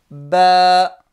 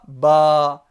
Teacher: Ba, c'est emphatique pour un arabe. Et le A, à la base, il est aminci